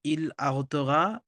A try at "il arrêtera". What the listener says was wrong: না না, আহত ঘা না, আঘেত ঘা, আঘেতে ভার্বটা ছিল, ইল আঘেত ঘা, হুম।